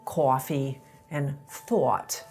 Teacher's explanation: A lot of New Yorkers raise the vowel in “coffee” and “thought,” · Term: raised thought vowel